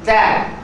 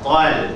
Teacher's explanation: Nipiskan lam, tebalkan to.